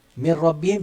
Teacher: Mir rabbihim jadi mir. Tak bunyi min rabbihim, nun dah tak bunyi dah. Bunyi mir terus. Mim lompat pi ra. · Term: Nun hilang